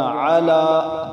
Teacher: کیونکہ اوپر کھڑی زبر ہے تو اس کو ایک الف مقدار لمبا کریں گے